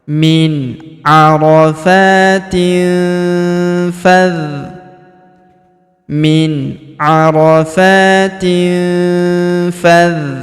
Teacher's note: Maka tanwin innya melebur ke huruf fa. Kita baca dengung dan samar. Dengungnya kita tahan dua sampai 3 harakat.